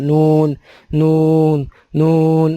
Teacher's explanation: ان تینوں کے جب دانتوں کی جڑوں کے اوپر سے تھوڑا تالو کی طرف مائل جب زبان کا کنارہ لگے گا تو نون ادا ہوگا۔ نون نون نون، نون میں بھی جب ایسے ہی ادا کرتے ہیں تو اس میں بھی ناک کا استعمال نہیں ہے، یہ بھی آپ خیال رکھیں۔